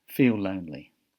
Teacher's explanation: feel ends with an L and lonely starts with an L so they share the linking sound